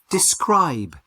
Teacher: The strongest sound is on the second syllable.